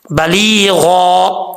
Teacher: قولا بلیغا، یا کیونکہ مدہ ہے اس لیے یہاں پر ایک الف کی مقدار اس کو لمبا کیا جائے گا، بلیغا، غین حروف مستعلیہ میں سے ہے تو پر پڑھا جائے گا